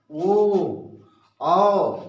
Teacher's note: कंठोष्ठ, ये हो गया कंठोष्ठ। ओ, मतलब ओ जब बोलेंगे तो आपके ओठों का प्रयोग हो रहा है और पूरा मुंह खुला लग रहा है, गले से आ रहा है